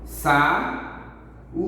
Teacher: Então você consegue perceber que o U tá sozinho no meio e é uma sílaba.